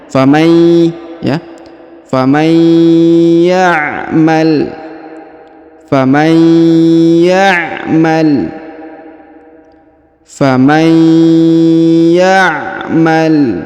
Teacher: Huruf tanwin atau huruf nun sukun yang ini bertemu dengan ya bertasdid, maka dia didengungkan dan ditahan 2 harokat ya. Serta huruf tanwin innya, tanwin atau nun sukunnya melebur menghilang ke sini. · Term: idgham bi gunnah